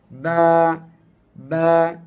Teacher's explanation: মাখরাজ থেকে উচ্চারণের সময় আওয়াজটা বন্ধ হবে এবং শক্ত হবে